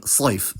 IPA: sˤɑjf